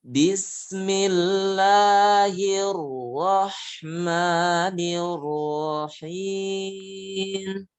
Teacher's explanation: Dan sembunyikanlah, samarkan untuk sifat takrir pada ro ketika dia bertasydid.